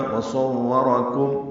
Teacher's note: وصورکم را پر پڑھیں گے، کاف باریک پڑھیں گے، کاف کو میم سے ملائیں گے. اظہار شفوی ہوگا وصورکم.